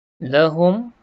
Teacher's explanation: jelas dan terang kita sebut mim mati tak dengung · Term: izhar syafawi